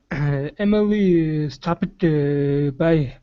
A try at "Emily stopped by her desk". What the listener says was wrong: so in between each word you're saying uh uh okay so take that out